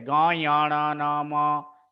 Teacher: ये सभी का उच्चारण नाक से होती है, इसलिए इसे अनुनासिका भी बोला जाता है। इसलिए ये अनुनासिका के नाम से भी जाना जाता है।